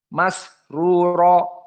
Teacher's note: Adapun di sini masruro jaroyan as-saut. As-saut, suara dari sin yang mendesis masih terasa.